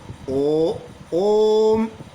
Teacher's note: ओम में जो ओ की ध्वनि निकलती है थोड़ा लंबा निकलती है यानी दो से अधिक मात्रा का समय लगा इसीलिए इसको तीन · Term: प्लूट स्वर